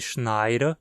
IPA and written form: ʃnaɪ̯ɾə (schneide)